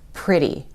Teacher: If we have a T between two vowels, it doesn't make the T sound. It doesn't sound like a T. It sounds more like a soft D. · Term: flap T